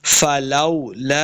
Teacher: فلو، واو کے اوپر اپنے دونوں ہونٹ گول کرنے ہیں، فلولا، لام کے آگے الف، اس کے اوپر مد بھی ہے تو ہم نے اس کو لمبا کر کے پڑھنا ہے